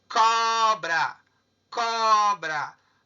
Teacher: Porque a penúltima sílaba é o có. E ela é a mais forte, é tônica. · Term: paroxítono